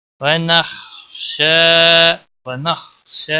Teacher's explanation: خا کے اوپر قلقلہ نہیں ہونا چاہیے، خا کو موٹا بھی پڑھنا ہے. شین کے اوپر کھڑی زبر ہے، ایک الف کے برابر کھینچ کر پڑھیں گے.